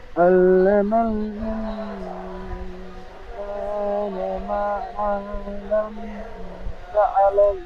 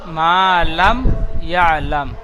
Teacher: আবার রিডিং পড়েন علم الإنسان ما لم يعلم মা লাম বলে গুন্না হয়ে যাচ্ছে, এখানে কায়দা হবে মিম সাকিনের পরে বা মিম ছাড়া ইয়া এসেছে, তাই মিমকে বিনা গুন্নায় জাহির করে পড়তে হবে। একে ইজহারের স্বাভাবিক বলে।